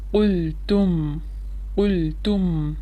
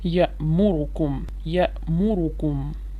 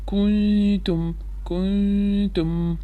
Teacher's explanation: the first letter is qaf, which is having vowel dhamma. So what we have to do, we have to completely round our lips. We have to circle our lips.